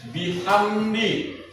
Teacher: Hukum tajwidnya izhar, karena min sukun bertemu dal, cara bacanya jelas di bibir.